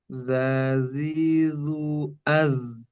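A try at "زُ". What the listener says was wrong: Jangan tebal domanya. Zu, tapi zu, zazi, zu, al.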